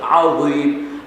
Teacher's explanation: عظیم میں عین ادا کریں گے اور وہ کو موٹا پڑھیں گے، یوں نہیں پڑھیں گے عن النبأ العظیم، پھر وہ زا بن جائے گا۔